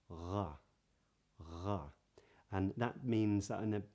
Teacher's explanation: the back of your tongue might be all the way up in the back of your mouth, touching what's called the uvula right in the back part of the palette, something like /r/.